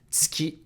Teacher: The /u/ sound in ‘tsu’ can be devocalized